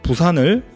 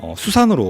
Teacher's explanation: 시읒은 치조음이자 마찰음이죠. 따라서 치조음화, 마찰음화라고 하는 겁니다.